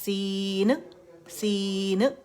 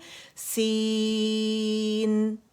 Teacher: آپ نے ایک، کیونکہ قلقلہ کا لیٹر تو ہے نہیں نا، آخر میں نون ہے تو نون سکون کے ساتھ اس کا توسط شو کرنا ہے، آواز پارشلی چلے گی